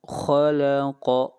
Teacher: خا کو موٹا پڑھیں گے، قاف کو موٹا پڑھیں گے اور نون کے اوپر یہاں پر اخفا کریں گے، آواز کو ناک میں لے جائیں گے، غنہ کریں گے۔